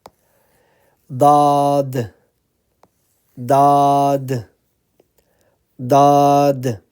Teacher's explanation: the edge of the tongue and is touching the roof of the mouth closer to the teeth